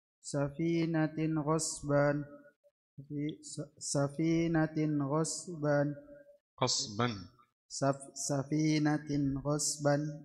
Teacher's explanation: تاء تنوين بالضمة مظهر قبل الغين المفتوحة